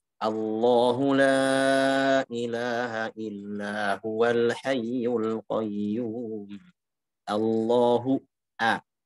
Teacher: Yang penting hamzanya tipis. A, bukan O.